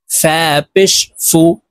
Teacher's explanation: ফা হরফ উপরের দাঁত নিচের ঠোঁটের সঙ্গে লাগিয়ে উচ্চারণ করতে হবে